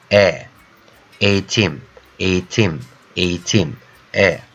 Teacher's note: So I'm reading the letter E vowel a little bit longer than normal.